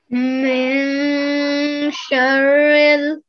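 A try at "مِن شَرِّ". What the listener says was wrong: Perfect. So hide the sound of the noon there. Yeah. Well done.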